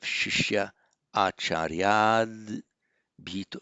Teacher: before all other vowels, the ah, the visarga drops, and you have a vowel hiatus, which is why you have shishya, acharyad, bhito.